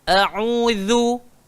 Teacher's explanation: Hamzah keluar dekat bawah, ain keluar dekat tengah, zal kena gigit lidah. A'udzu. Jangan berat-beratkan bacaan.